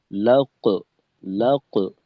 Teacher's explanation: আর এখানে উম, কফ যেহেতু মোটা হরফ, তো মোটা হরফের কলকলার ক্ষেত্রে কলকলার যে দ্বিতীয় অংশের আওয়াজটা ওইটা ঊর্ধ্বমুখী হবে, মোটা